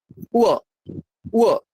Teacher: এই বটাতে দুটো ঠোঁটকে ঠেকাবেন না। উ, উ, ঠোঁটটা না একটু গোল মতো, মাঝে ফাঁকা থাকবে। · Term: অন্তস্থ ও